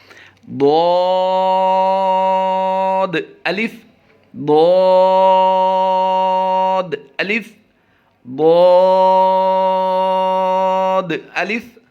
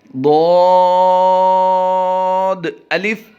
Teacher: جیسا کہ پہلے بھی اس کا مخرج بتایا گیا ہے کہ زبان کی کروٹ اور اوپر کی داڑھوں کی جڑ سے یہ ادا ہوتا ہے. اس کو ادا کرتے ہوئے یہ خیال ضروری رکھیں کہ دال داد نہیں بننا، دود پڑھنا ہے.